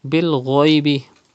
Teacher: ghain is a mustalia letter, you have to read with thick tone